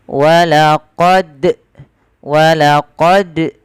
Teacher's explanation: Nah, ini juga ya kurang tepat karena dia apa? Menambahkan hamzah pada huruf dalnya. Harusnya tidak boleh menambahkan huruf hamzah di dalam melafalkannya.